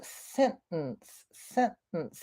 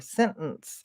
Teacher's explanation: yeah it does sort of have a glottal t in it